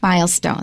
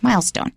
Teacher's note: The stress will normally be on the first syllable or the first word.